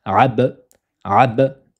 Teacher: lettre on la fait rebondir car c'est la règle de alal on touche son point de prononciation qui est le contact des deux lèvres et on relâche aussitôt ça donne concrètement ABAB AB attention à ne pas dire AB